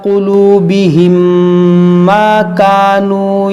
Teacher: میم ساکن کے بعد دوسری میم یہاں پر غنہ کریں گے